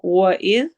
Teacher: واو میں ہون گول ہوں گے، اذ زال کو نرمی سے پڑھنا ہے